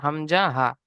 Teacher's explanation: হলকের বা কণ্ঠনালী শুরু হতে উচ্চারিত হয় হামজা হা